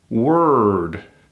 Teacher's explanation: we kill that o and all we have is a w sound